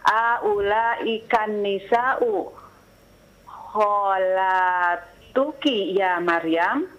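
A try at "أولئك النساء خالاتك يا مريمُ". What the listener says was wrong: Naam, ya Maryamu, hidupkan semua harakatnya.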